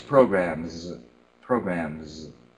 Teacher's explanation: that z sound because it's next to a voiced m right but you made it more like an s